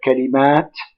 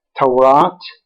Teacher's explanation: all such words in arabic are stressed on the last syllable the one with the suffix at